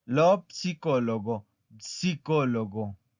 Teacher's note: Porque la P tiene que sonar. En español, como ya les había repetido, la P no suena. Pero en italiano tiene que sonar.